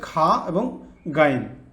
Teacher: চার নম্বর মাখরাজ কণ্ঠনালীর উপরিভাগ থেকে উচ্চারিত হয়